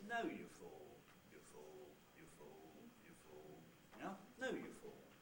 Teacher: If we have some tail syllables, and you can see I've got the two syllables you fool, then what happens is that the nucleus itself starts high in pitch, falls to low, and then levels out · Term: high fall